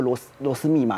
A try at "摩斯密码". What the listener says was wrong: 那 个 不 叫 螺 丝 ， 那 叫 摩 斯 密 码 ，